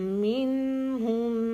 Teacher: میم شدت کے لیے 2 حرکت کا ہولڈ